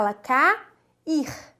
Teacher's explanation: então essas vogais ficaram em sílabas separadas vendo assim se forma o hiato